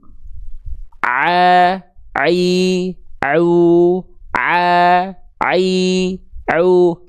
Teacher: semuanya masuk ke rongga mulut. Ke rongga mulut, tidak ada yang masuk ke rongga hidung. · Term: ain